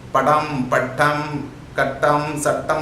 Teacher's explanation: During the production of sound ta, you have the tip of the tongue touches the teeth ridge. In Tamil, the tongue curls very back and touches the roof of the mouth.